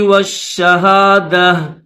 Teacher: Stop کریں گے تو اس گول تا کو ہا پڑھیں گے، جیسے میں نے یہاں پر اسٹاپ کیا تو میں نے اس کو ہا کے ساتھ پڑھا ہے.